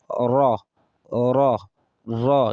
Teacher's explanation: when you want to pronounce raw the rolling of tongue should just come once